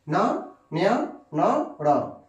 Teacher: ये जो 4-5 अक्षर होते हैं, ठीक है, इनको हम लोग क्या करते हैं? नाक से उच्चारण करते हैं, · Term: नासिक व्यंजन